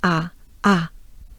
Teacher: again it's a very open ah ah very french